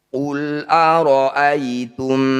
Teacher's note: bertemu mim disebut bacaan Idam Mimi atau Idam mitli cara bacanya mim Pertama masukkan pada mim kedua kemudian dengungkan dua harakat